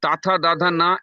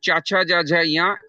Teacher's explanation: Tatha Dadha Na is dental and Chacha Jaja Ya is Talabya, palatal.